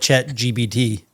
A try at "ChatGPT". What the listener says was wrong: GPT. You keep saying B. No, it's Chat GPT.